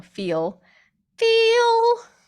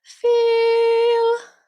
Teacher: it sounds very tight very overdone on the L like there's so much tongue in there